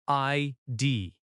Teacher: Stress on both letters equally.